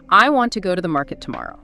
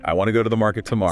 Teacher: See how want go market and tomorrow stand out. They're the strong stressed words carrying the core message.